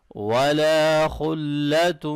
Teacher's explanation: ولا الف مدہ کو لمبا کریں گے، خا موٹا پڑھیں گے، آگے تا اور واو کو ملاتے ہوئے ادغام مع الغنہ ہوگا.